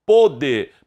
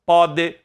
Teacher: Pode, para estabelecer que é passado com o som fechado. Pode, não tem acento presente, som aberto.